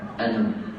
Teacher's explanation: Bila kita berhenti pada kalimah ana tu, kita boleh berhenti panjang dia, dua harakat.